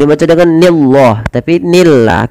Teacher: Dan lafal Allah di sini dibaca dengan lam tarqiq.